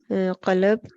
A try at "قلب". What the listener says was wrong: یہ نا قلب ہے، قلب لام کے اوپر بھی زبر نہیں ہے، میم کے اوپر۔ دوبارہ پڑھ سکتی ہیں آپ قلب اور امر کو؟